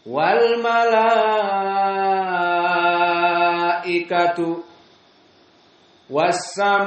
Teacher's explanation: Maka di sini hamzahnya bersambung langsung dalam satu kalimat mad wajib, harus 6, kenyang.